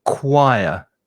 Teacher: And be careful of the pronunciation because you've got a CH there, but the sound is K. It's a hard K sound. So choir. And there's also an intrusive W, a W sound.